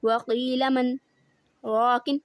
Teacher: آواز میں رک گئی لیکن میرا سانس چلتا رہا، سانس میں نے نہیں توڑا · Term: سختہ